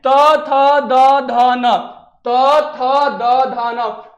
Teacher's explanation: जब जीभ दांत में टच कर रहा है तो उसको हम लोग क्या बोलेंगे? दंत बोलेंगे।